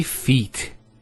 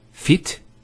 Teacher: Similarly, we have the word feet. We don't say fit, we say feet. There's an elongation of the E sound.